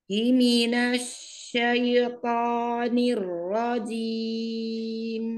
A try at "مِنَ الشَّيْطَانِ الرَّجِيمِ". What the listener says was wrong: Ya ya tafasinya belum kedengeran هي من هيمينش شيطاني الرجيم huruf tafasi itu كان suaranya tafasinya menyebar dalam mulut هيمينش jadi menyebar dalam mulut ya suaranya